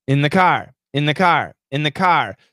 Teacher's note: so what happens is the th is canceled